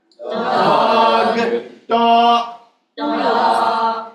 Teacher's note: I want to stress the hard ending with no vowel.